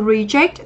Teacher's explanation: đây là động từ trọng âm rơi âm tiết thứ hai